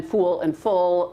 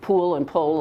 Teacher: a lot of people don't pronounce pool and pull differently